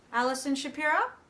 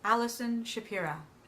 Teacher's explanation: uptalk at the end of a sentence is part of the language and part of the accent, and that's okay.